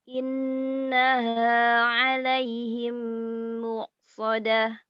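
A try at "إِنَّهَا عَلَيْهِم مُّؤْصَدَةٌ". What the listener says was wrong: Hamzah. Innaha alaihim muqsadah. Muqsadah. Dan bukan muqsadah. Muqsadah.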